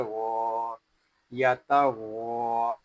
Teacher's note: غین حروف مستعلیہ میں سے ہے اس کو پوری یعنی موٹا پڑھیں گے